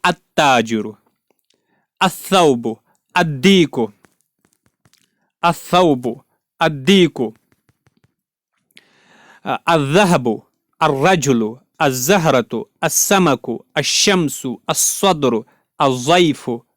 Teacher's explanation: ان میں کسی بھی ورڈ کے شروع میں لام کو نہیں پڑھا گیا · بعد اگر ان کے شروع میں الف لام لگایا جائے تو لام کو نہیں پڑھا جائے گا، بلکہ لام کو تا سے ملائیں گے اور تا پر تشدید دیں گے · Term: حروف شمسی